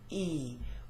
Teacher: E is very high front, E, with the tongue quite high up near the front of the mouth